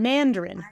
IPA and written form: ˈmændərən (Mandarin)